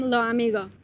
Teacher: In syllable final position, S becomes a soft H or disappears.